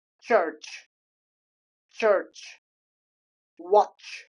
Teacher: In order to pronounce these sounds first of all combined first of all com combination combination of stop and fricative sounds.